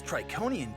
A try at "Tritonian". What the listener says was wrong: Tritonian. It's pronounced Tritonian. Tritonian. With a T in the middle.